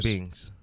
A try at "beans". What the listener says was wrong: A bean? You put a G on it.